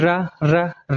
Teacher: जब आप र का उच्चारण करेंगे तो जीहवा में कंपन उत्पन्न हो जाता है। इसलिए कहते हैं इसको प्रकंपित व्यंजन।